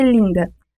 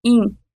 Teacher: na palavra linda, a vogal I é nasalizada, IN, e a consoante nasal alveolar, embora escrita com a letra N, não é pronunciada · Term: nasalização da vogal